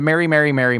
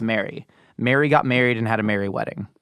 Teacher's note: m e r r y m a r y and uh m a r r y all sound the same they're all pronounced Mary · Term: Mary Mary Mary merger